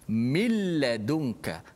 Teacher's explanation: Suara nun dah tak ada pada bacaan. Dia hanya ada pada tulisan sahaja.